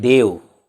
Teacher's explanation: जब देव बोलते हैं तो अंत में अ का उच्चारण होता है